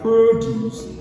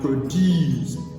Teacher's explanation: produce as a noun, stress on the first syllable, and produce as a verb, stress on the second syllable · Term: shifting stress